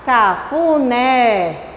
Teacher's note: Oxítona é a última, que é a mais forte.